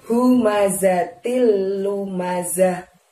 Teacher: Pengucapan humazatil, hu pada humazatil itu, gunakanlah tenggorokan bagian dalam. Hu-nya yang tebal ya nak.